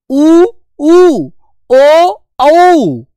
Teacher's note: इन वर्णों को बोलते समय होठ गोल हो रहे हैं ना, तो हो रहे हैं, तो बेटा बिल्कुल सही है, वृत्ताकार स्वर हैं।